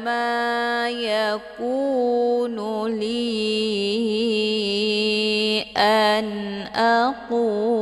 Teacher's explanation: Li dibaca panjang boleh 4 atau 5 harokah, karena ini dinamakan dengan mad jaiz munfasil.